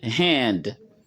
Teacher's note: comme vous entendez hand avec h aspiré